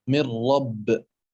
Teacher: النون مع الراء، مثل من رب، فهما متقاربان في المخرج، متقاربان في المخرج، النون متقاربان في المخرج وبينهما 5 صفات مشتركة.